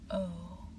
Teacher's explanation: The long o finishes with rounded lips.